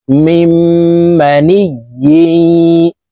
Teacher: এই ইয়া এই তাসদীদওয়ালা ইয়ার সাথে গুন্নার সহিত মিলাইয়া পড়তে হবে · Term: ইদগামে বা গুন্নাহ